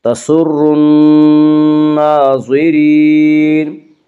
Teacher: تسر الناظرین، را کو باریک پڑھا جائے گا، اس کا قاعدہ یہ ہے کہ را کے اوپر زبر اور پیش آئے تو را کو پر پڑھا جائے گا، را کے نیچے زیر ہے تو را کو باریک پڑھا جائے گا